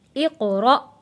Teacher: اقرأ، قاف حروف قلقلہ ہے، آواز واپس پلٹ کر آئے گی۔ اقرأ، حمزہ کے اوپر جب بھی جزم آئے گا تو ہم نے اس حمزہ کو جھٹکا دے کر پڑھنا ہے